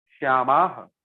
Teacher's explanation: Visarga you have to pronounce clearly, otherwise it will become Shyama and the whole meaning will change.